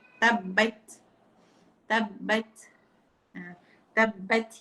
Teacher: Sepatutnya kena bunyi sedikit. Bukan tabat tergantung. Tak boleh. Dia kena lepaskan sedikit. Tabat. Tabat. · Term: hamas